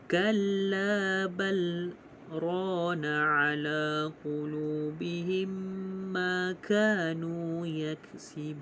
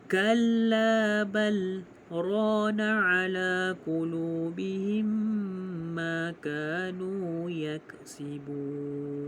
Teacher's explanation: cara bacaannya saktah pada kalimah bal dengan bacaan izhar.